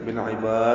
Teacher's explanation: تو بصیر بالعباد، لام ساکن پہ اظہار قمری، عین وسط حلق سے ادا کریں گے، با کو لمبا کریں گے. بالعباد میں با الف مدہ کے بعد دال آنے کی وجہ سے لمبا ہو رہا ہے اور دال ساکن پہ قلقلہ کر رہے ہیں.